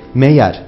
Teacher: Meğer kelimesinde yine yumuşak G'yi Y'ye dönüştürerek meğer dememiz kulağa daha hoş gelir.